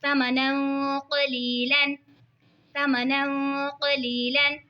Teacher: या साकिन से पहले ज़ेर है तो या मद्दा होगा, इसीलिए इसको खींच के पढ़ेंगे